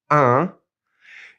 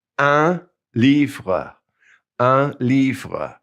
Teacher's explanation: First of all, we have un, U-N, and we're going to push that in through our nose. It's a nasal.